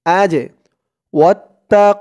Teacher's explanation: জিমটা কলকলার হরফ ধাক্কা দিয়ে পড়তে হবে